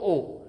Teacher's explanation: ओ का जो उच्चारण स्थान होगा वो क्या होगा कंठ ओष्ठ